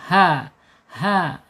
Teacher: H-nya ada di makhraj tenggorokan bawah.